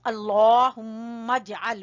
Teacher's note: میم کو جیم سے ملائیں گے